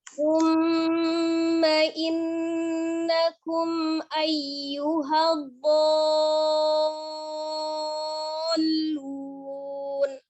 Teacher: Jadi mad yang bertemu dengan tasdid yang terjadi di dalam satu kata. Panjangkan dulu do 6 harokat, tasdidkan ke lam. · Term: mad lazim ilmi musaqqaf